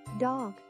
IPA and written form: dɒɡ (Dog)